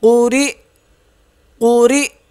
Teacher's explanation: قاف پیش قو را زیر قری حمزہ زبر قری وقف قری جب اس پہ وقف کریں گے تو یہ حمزہ ہے اس پہ جھٹکا دیں گے